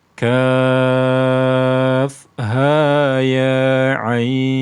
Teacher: ha dan ya ini cukup dibaca Dua harakat saja